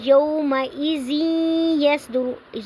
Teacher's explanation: یومئذ یصدر الناس، اب یومئذ تنوین کے بعد یا آ رہا ہے حروف ادغام میں سے، تو یہاں پہ تنوین کے بعد حروف ادغام میں سے یا آ رہا ہے تو یا کو مدغم کر کے پڑھیں گے، تنوین کے ساتھ ملا کے پڑھیں گے